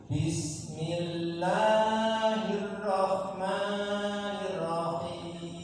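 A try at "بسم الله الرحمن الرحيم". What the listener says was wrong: Ya, ro-nya tasydid ditahan sedikit. Jangan terlalu cepat. Jangan bismillahirrahmanirrahim, tapi bismillahirrahmanirrahim.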